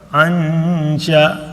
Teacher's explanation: ہم نے اخفا کیا کہ سلائڈ سا غنہ کیا جب بھی نون ساکن کے بعد یا تنوین کے بعد.